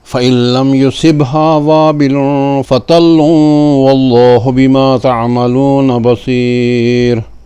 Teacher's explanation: تنوین کے بعد حرف ادغام ہے واو، اس میں ادغام ناقص کرتے ہوئے پڑھیں گے